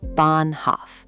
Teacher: The H is silent, but it's a flag saying hold the vowel. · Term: long A